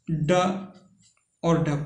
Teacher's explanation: जिनके उच्चारण में जीभ ऊपर उठकर झटके के साथ नीचे को आए, उच्छिष्ट व्यंजन कहलाता है।